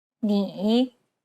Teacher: It's the most unique tone out of all the tones because the pitch dips and then rises. 你 Imagine a ball bouncing on the ground as you make this tone. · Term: third tone